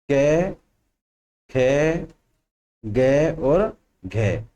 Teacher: कै वर्ग की ध्वनि कहां से आती है? कंठ से। इसको बोलते हैं कंठीय।